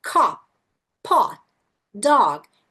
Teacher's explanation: Letra O é o nosso O mesmo. Então você vai falar com o O aberto.